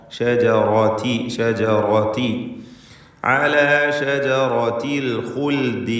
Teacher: റായിന് തഫ്ഖീം കൊടുക്കുക, തടിപ്പിച്ച് റായിനെ ഉച്ചരിക്കുക.